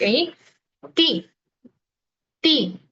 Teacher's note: La ti, se produce tocando los alveolos detrás de los dientes